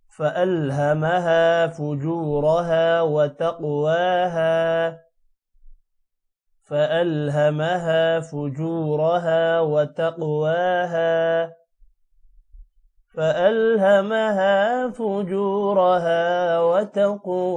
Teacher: قوف موٹا ہوگا اور قوف پر قلقلہ بھی ہے، جبکہ واو پر کھڑی زبر ہے تھوڑا سا لمبا ہوگا، ہا الف کی وجہ سے لمبا ہوگا۔